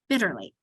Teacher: Because so that's what makes your first syllable bit, and then ter, and then lee, but we put it together and it's bitterly. We only say the T once, but we divide it between there because otherwise it helps us remember that it's a short I.